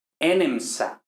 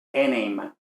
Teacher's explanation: Luego de nemo, aquí no tenemos sufijo yod ni nada de eso, tenemos, en principio, lo que esperamos es enemsa, pero otra vez, la M con la S no puede ser, por tanto desaparece la S y alarga compensatoriamente la E